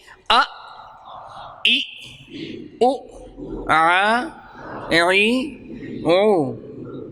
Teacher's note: حمزہ پر زبر ہوگی نہ جزم ہوگی تو تھوڑا سا جھٹکا لگے گا